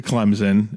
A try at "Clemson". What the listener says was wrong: There's no Z and there's no P. It's just Clemson. You're both saying it wrong. Clemson.